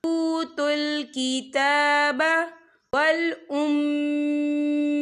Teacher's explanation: ता के ऊपर खड़ी हरकत है, तो हम इसे 2 या 3 हरकत के बराबर खींचेंगे